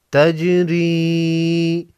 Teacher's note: جیم ساکن پر قلقلہ ہوگا